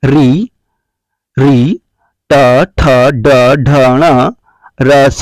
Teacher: मूर्धा ऋतु रसा मूर्धन्यः, री, ट, ठ, ड, ढ, ण, र, स का उच्चारण स्थान मूर्धा से होता है